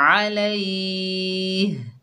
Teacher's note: और इसके पीछे या मद आ रही है तो यहाँ पर मद बनेगी मद आरिज़ लिस्कून। 2 से 5 अलिफ की मिकदार तक खींचकर पढ़ सकते हैं।